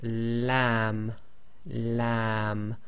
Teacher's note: a bit more pressure on the front of the tongue. The back of the tongue is as normal, it's not raised